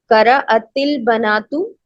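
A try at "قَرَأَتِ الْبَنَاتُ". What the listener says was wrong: very good,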